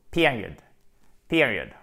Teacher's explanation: Accent tonique sur la première syllabe avec un i court.